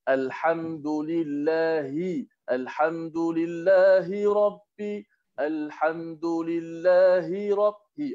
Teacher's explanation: Huruf ha simpul tu makhrajnya berada di pangkal halqum, dekat. Ha pedas ada di tengah halqum.